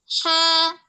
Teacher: harful ha itu letaknya di tengah tenggorokan. Ha, tipsnya disempitin dulu.